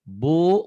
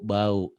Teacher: Kalau bu matobi panjang, satu alif, dua ketukan. Kalau bau nggak panjang.